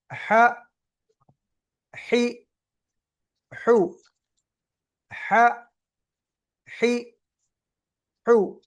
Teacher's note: گلے کا درمیان والا حصہ، وسط الحلق، گلے کا درمیان والا حصہ